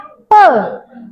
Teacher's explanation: Jadi bukan P, bukan kayak gitu, tapi seperti apa? P ditutup dulu baru dilepaskan. Nah, salurannya ditutup dulu baru dilepaskan. Nah, begitu juga dengan huruf be ya, be, T, de, dan g.